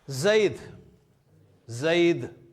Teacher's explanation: اے کی آواز جو ہے نا وہ ای کی آواز ہے عربی زبان میں